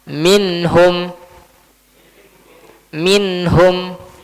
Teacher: Maka nunnya dibaca dengan jelas. Di sini pun ada gunnah.